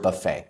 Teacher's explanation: This is a French word, so it has a silent t at the end. It's not Buffett.